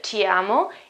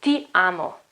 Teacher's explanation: The T sound, you remember, it's not ch, ti amo, it's t, ti amo.